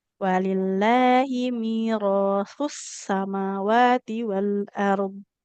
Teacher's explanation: dari sa yang ujung lidah ke ujung gigi seri atas pindahkan ujung lidahnya ke gigi seri yang bawah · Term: sin